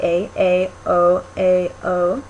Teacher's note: we also have vowel o which is back um but it's middle